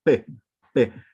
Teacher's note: entonces se va a unir el labio inferior con el labio superior y me va a generar este punto de articulación que se le va a conocer como bilabial